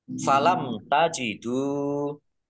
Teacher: mim sukun bertemu dengan huruf ta, bacaan idhar safawi, dibaca jelas